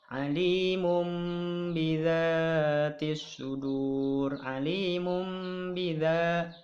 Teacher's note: Tanwinnya yaitu dhammahtain bertemu dengan ba. Nah, seolah-olah di depan tanwin ini seperti ada mim. Alimum bidza. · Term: iklab